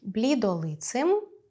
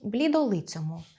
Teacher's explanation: ц — твердий, хоча у попередніх відмінкових формах був м’яким